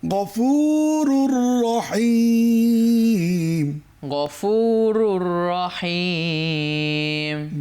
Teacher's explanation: র দুপেশ আছে, পরের রকে ধরে ফেললো। গফুরুন আর হলো না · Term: গুন্না ছাড়া ঈদগাম